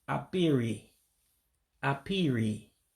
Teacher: the KP sound is again one that me and probably all native english-speaking people really can't say very well so I just convert KP to P